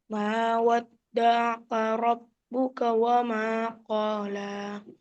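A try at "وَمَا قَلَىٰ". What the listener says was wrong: Wa ma qala, koknya tidak panjang.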